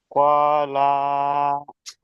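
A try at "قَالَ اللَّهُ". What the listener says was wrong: আবার লা টান দেন। এই যে লা টান দিচ্ছেন কেন? কলাল্লাহু।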